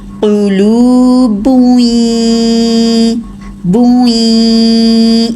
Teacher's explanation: جب بھی یہ تنوین کے بعد آ جائیں یا نون ساکن کے بعد آئیں، تو تنوین میں جو نون کی آواز ہے یا نون ساکن کی آواز ہے وہ آگے مرج ہوتی ہے غنہ کے ساتھ، ٹھیک ہے، تو اس میں کیسے ادا کریں گے، غنہ کو ٹائم بھی دیں گے۔ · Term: ادغام غنہ کے ساتھ